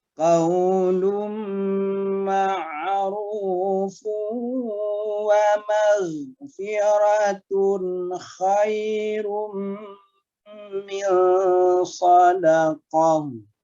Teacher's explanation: Qaulun ketemu dengan mim, berubah lunnya menjadi lum. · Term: idgham ma'al gunnah